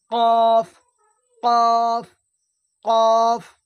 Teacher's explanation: জিবের গোড়া এবং তার বরাবর উপরের তালুর সাথে লাগিয়ে উচ্চারণ হয় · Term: কফের মাখরাজ